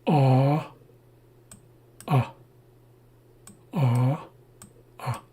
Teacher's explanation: We have a double A and it's very similar to the regular A. It sounds like a but it's a longer sound. The double A doubles the length of the sound. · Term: long A